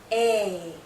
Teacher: this is a long vowel sound a our mouth is opening more our jaw is lowering a this sound is also tense so you might be seeing